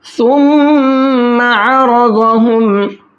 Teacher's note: میم کے اندر غنہ کریں گے کیونکہ میم کے اوپر تشدید ہے، اگر میم پر تشدید ہوتی ہے تو غنہ کر کے پڑھتے ہیں۔